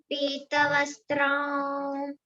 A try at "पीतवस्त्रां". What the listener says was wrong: No, not wa. N. Pitavastram.